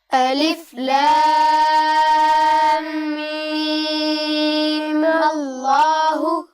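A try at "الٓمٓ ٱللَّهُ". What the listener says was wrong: جی بیٹا اس پہ مد نہیں کریں گے، آخری میم پر مد نہیں ہوگی، آپ اس کو صرف 2 حرکات تک کھینچ کے اس کے فوراً بعد آپ کو میم کو لام سے ملانا ہے، ٹھیک ہے؟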